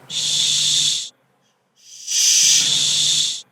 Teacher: Let's see what happens: /ʃ/, /ʃ/ So you will have here you see the front part of the tongue touching your post alveolar region.